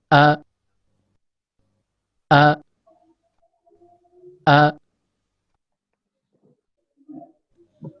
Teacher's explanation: Huruf hamzah keluar dari pangkal tenggorokan sebagaimana yang terlihat pada animasi ini.